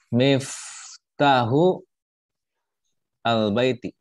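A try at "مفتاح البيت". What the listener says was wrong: Miftahul baiti. Jadi miftahul langsung. Nah, disambung. Karena dia di tengah ya, posisinya di tengah. Miftahul baiti.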